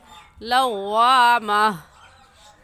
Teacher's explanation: बाद लव्वा माँ गलत है, अक्सर हजरात गलती कर जाते हैं, लव्वा माँ नहीं बल्कि हा निकालनी है, हा को साकिन करना है